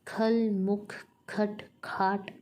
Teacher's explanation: ख के महाप्राण होने के कारण आंतरिक वायु प्रवाह अधिक होता है।